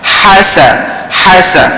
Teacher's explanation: Sa pendek, ha panjang sikit.